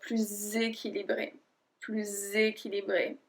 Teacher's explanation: because we link words, and because équilibré starts with a voyelle, well, we're going to say plus équilibré.